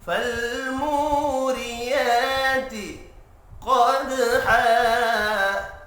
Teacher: دال ساکن پر قلقلہ کریں گے